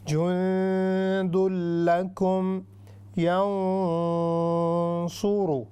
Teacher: لام حروف یرملون میں سے ہے اور لام اور را میں غنہ نہیں ہوگا. اس کو ہم کہیں گے ادغام بلا غنہ، یعنی غنے کے بغیر ادغام